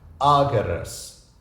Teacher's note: The accent here falls on the A, so the Romans would have been able to hear the difference when spoken.